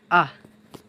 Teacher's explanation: এই হামজা হা কণ্ঠনালীর শুরু স্থান থেকে উচ্চারণ হয় · এই দুটি অক্ষর হালকের মধ্যখান স্থান হতে উচ্চারণ হবে আইন হা